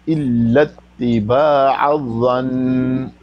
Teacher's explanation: نون پر شد ہے اور وہاں پر وقف کریں گے نا تو حرکت نہیں پڑی جائے گی لیکن شد پڑی جاتی ہے، تو یعنی غنہ پڑا جائے گا